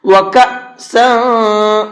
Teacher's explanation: اب یہ حمزہ ہے اور اس کے اوپر جزم آ چکا ہے، تو اس حمزہ ساکن کو جھٹکے کے ساتھ میں پڑھتے ہیں۔